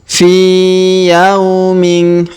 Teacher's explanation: Huruf fi kita panjangkan 2 harokat karena ya sukun di depannya